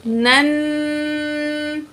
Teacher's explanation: جب نون ساکن ہو اور اگلا لفظ حروف اخفا میں سے، حروف اخفا کے 15 لفظ ہیں جو کہ اسکرین پہ آ رہے ہیں، ان میں سے اگر نون ساکن کے بعد حروف اخفا میں سے کوئی لفظ آتا ہے تو نون کی آواز کو ہم ناک میں چھپا کر پڑھیں گے